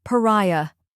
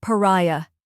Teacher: First, we have pa, which sounds like the paw in parrot, but softer. Next is rai, which rhymes with eye or sky and is the stressed syllable. Finally, we have a soft, unstressed sound, like the A in sofa.